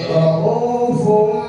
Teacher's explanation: Rohufum pada huruf mim. Ya, tanwin menjadi huruf mim. Rohufum, tapi jangan terlalu rapat bibirnya. Dengan rohufum nanti jadi idgham.